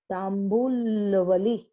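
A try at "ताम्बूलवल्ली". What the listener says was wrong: Not Vali. It is Valli.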